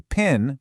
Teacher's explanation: only thing that separates them is that tiny little puff of air for the P sound.